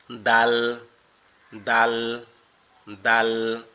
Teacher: উপরের দুই দাঁতের গোড়ার সঙ্গে লাগবে, লেগে উচ্চারিত হবে দাল দাল দাল